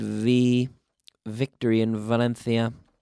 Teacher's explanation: it's secretly an F and we take the F and we activate the vocal cords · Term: V sound